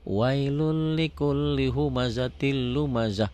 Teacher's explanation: Tin karena ketemu lam jadi humazatil. Ya, n-nya hilang. N-nya hilang kalau dilatenkan.